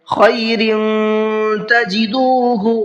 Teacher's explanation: را کے نیچے تنوین ہے اور تنوین کے بعد میں تا ہے، تو تنوین میں اخفا کریں گے، اس لیے کہ تا اخفا کے حرفوں میں سے ہے اور تنوین کے بعد میں آ رہا ہے۔